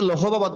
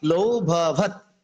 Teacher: যেমন আমি লিখলাম কি লৌ ভবৎ, অনেকে কিন্তু লৌহবৎ বলে, এটা লৌহবৎ নয়, লৌ ভবৎ, অর্থাৎ হর উচ্চারণটা পূর্বের বর্ণের সাথে ওকার সাথে হয়ে যায়, যুক্ত হয়ে যায়।